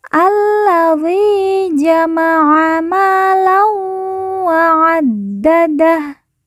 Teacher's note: Ma kita baca panjang 2 harokat karena di depannya terdapat alif.